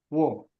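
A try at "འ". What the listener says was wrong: Oh, it's like you say "wo," but this one is not the sound "wo." This is the sound "wu." Okay, "wu." Yeah, it's. I think it's like number 5 in Chinese, right? "Wu," right?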